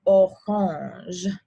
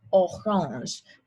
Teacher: there is a little bit of that back of the throat action that we often get in French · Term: back of the throat R